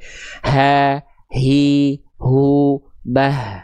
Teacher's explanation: Huruf ha besar keluar dari tenggorokan paling bawah atau pangkal tenggorokan atau tenggorokan paling jauh. Istilah dalam tajwidnya adalah aqsal halqi.